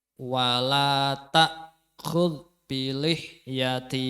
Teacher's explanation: untuk Dal niku jangan sampai memantul karena bukan huruf Qalqalah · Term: Dal sukun